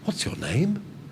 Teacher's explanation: the students hear somebody saying, what's your name? With a rising intonation